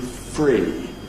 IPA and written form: friː (three)